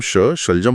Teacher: जब हम शलजम वाला श बोलते हैं तो हमारी जीभ को तालू को छूना चाहिए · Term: तालव्य श